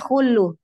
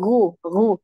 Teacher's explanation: kalau ghain itu dia tidak mengalir nafas. Ya, dia jahar. Jadi jangan khullu tapi ghu, ghu.